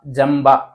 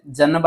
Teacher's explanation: ಇದರ ಕೊನೆಯಲ್ಲಿರೋ ಅನುನಾಸಿಕ ಅಕ್ಷರ ಯಾವುದು ಮ ಸೋ ಮ ಅಂತ ಓದಬೇಕು ಮ್ ಅಂತ ಓದಬೇಕು